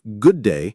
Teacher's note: consonant consonant linking like good day where the duh and duh blend